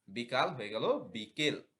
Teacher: ই ধ্বনির প্রভাবে আধ্বনি এ হয়ে গেল বিকাল হয়ে গেল বিকেল মধ্যগত সঙ্গতি পূর্ববর্তী ও পরবর্তী স্বরের প্রভাবে